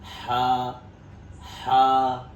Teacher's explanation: हा गले से अदा होगा। एक हवा के साथ में हल्की आवाज से